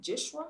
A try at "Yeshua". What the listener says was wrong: Yeshua, there's no J.